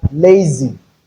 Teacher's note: Letter Z can be realized as the voiced alveolar fricative sound, Z, as in zebra.